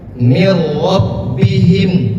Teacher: Mir rabbihim, seakan-akan nunnya itu tidak ada. Maka kita masukkan ke huruf setelahnya, yaitu huruf ro. Mir rabbihim, dan tidak ditahan. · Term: idgham bila gunnah